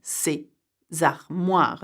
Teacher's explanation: we make the liaison between ces and armoire